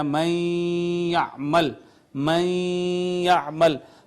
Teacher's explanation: تو ناظرین آپ دیکھیں کہ یہ 2 حروف ہیں، پہلا مدغم ہے، دوسرا مدغم فی ہے، اور پہلے حرف نون جو ہے اس کا تو ادغام ہو گیا تھا یا میں، لیکن نون کی صفت باقی رہ گئی ہے، نون کی آواز باقی رہ گئی ہے۔ ہم اس کو پڑھ رہے ہیں من یعمل، یہ جو غنہ کیا ادغام کے ساتھ تو یہ نون کی آواز تھی جس کی وجہ سے ہم نے غنہ کیا۔ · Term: ادغام ناقص